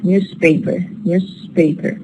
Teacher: we have a change from Z to S Voice to voiceless because it is followed by P which is voiceless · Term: voice assimilation